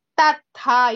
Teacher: In the word tatha, the first tha is alpa prana, the second letter tha is mahaprana.